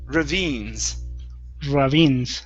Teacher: so this is a long e sound and the stress is on the end